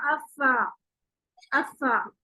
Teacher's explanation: फा किस तरह से अदा होगा, ऊपर वाले दांत यानी सनाया उलिया, सनाया उलिया नीचे वाले होंठ के तर वाले हिस्से पर रखे जाएंगे तो फा अदा होगा। सनाया उलिया को नीचे वाले होंठ के तर वाले हिस्से पर रखेंगे तो फा अदा होगा।